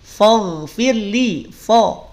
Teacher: Jadi fo bukan fa. Kalau bunyinya fo berarti ketarik fa-nya jadi tebal. Sedangkan yang tebal pada lafaz faghfirli hanya ghain saja.